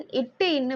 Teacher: next இட்டு இன்னு பார்த்தோம் அப்படின்னா நாவின் நுனி அன்னத்தின் நுனி பகுதியை வந்து பொருந்துவதால் நம்மளுக்கு பிறக்குது